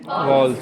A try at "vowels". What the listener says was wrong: हाँ, जिसे आप वॉवल्स कहते हैं। वॉवल्स नहीं है वो, वाउल्स। वाउल्स। लिपसिंग भी देखना, वाउल्स। वी भी वा की साउंड दे रहा है, डब्ल्यू भी वा की साउंड दे रहा है, दोनों में फर्क नजर आ रहा है।